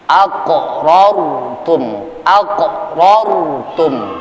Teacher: ra sukun tersebut kita baca dengan cara tebal. Mufakhamatir ra, tebalkan bunyi huruf ra-nya.